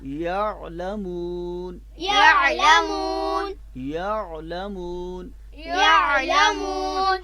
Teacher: حرف عین جو ہے وہ اپنے مخرج سے ادا کریں گے وسط حلق سے